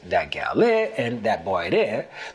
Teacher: the word for there, de, adds or subtracts the D depending on if there's a consonant or a vowel preceding it.